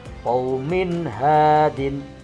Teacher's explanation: Cara bacanya itu jelas tanpa dengung. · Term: idhar